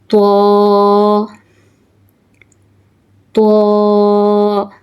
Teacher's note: Pronounce from the tip of the tongue and the roots of the upper front teeth.